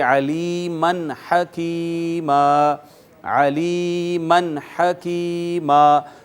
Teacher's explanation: دیکھ لیجئے نون تنوین آ گئی میم کے اوپر اور یہاں پہ اخفا ہونا چاہیے تھا، علیمن ہم کہتے، لیکن آگے چونکہ ہا آ گئی اور ہا حروف اظہار میں سے ہے، لہٰذا یہاں پر اخفا نہیں کریں گے، اظہار کریں گے اور اس کو بغیر آواز چھپائے ظاہر کر کے پڑھیں گے نون تنوین کو